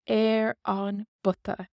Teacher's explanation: P takes a B and we lose the P sound